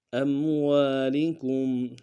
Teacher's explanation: حمزہ کو میم ساکن کے ساتھ ملانا ہے، غنہ کریں گے · واو کے ساتھ الف مدہ ہے، ایک الف دار میں کھینچیں گے